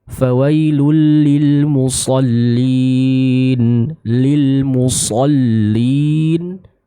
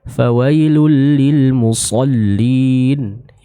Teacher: huruf shad dia punya sifat itbaq ya, yang artinya punya ketebalan yang cukup kuat atau cukup tinggi. Maka kita harus menyempurnakan bacaan huruf shad yang dibaca dengan tingkat ketebalan yang tinggi tersebut.